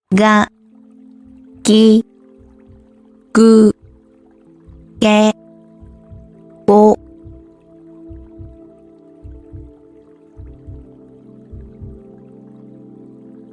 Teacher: G is a voiced sound, meaning that the sound is produced with vocal cord vibration, and also with little to no air expulsion. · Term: voiced G sound